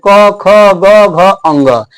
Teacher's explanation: इस पांचों अक्षर का जो उच्चारण होता है आपको कंठ से होता है